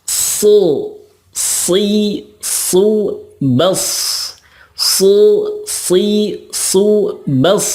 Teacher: kalau sod itu sama makhrajnya dengan sin, yakni ujung lidah dengan gigi seri bawah, tetapi pangkal lidahnya diangkat.